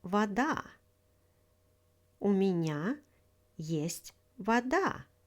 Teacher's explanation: In the word вода, stress falls on the second syllable.